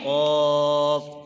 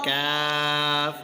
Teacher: قاف زبان کی جڑ اور تالو کے نرم حصے سے ادا ہوتا ہے۔ کاف زبان کی جڑ اور تالو کے سخت حصے سے ادا ہوتا ہے۔